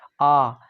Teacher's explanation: आ जब बोलते तो जीभ का पिछला हिस्सा प्रयोग में आता है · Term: पश्च स्वर